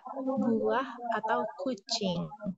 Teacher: For example, U, high back rounded tenses adalah bunyi vokal dengan tinggi-tinggi, high, posisi belakang, back, dan bibir yang membulat atau rounded. Bunyi ini dihasilkan dengan lidah berada di posisi tinggi dan belakang, sementara bibir ditarik ke dalam dan membulat. Bunyi vokal U adalah contohnya seperti dalam kata buah atau kucing.